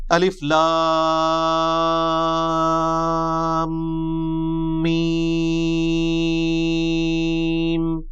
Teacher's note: لام اور میم چونکہ اس کا جنکشن ہے تو میم کے اوپر تشدید بھی ہے، غنہ بھی ہو رہا ہوگا